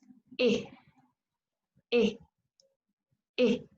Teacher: La primera es una vocal que nosotros no tenemos en español de Chile y que es una vocal bastante extraña porque nuevamente es un híbrido entre una I y una E